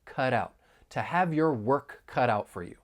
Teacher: So let's think about that phrase, cut out. I can link that flap T with the vowel sound in out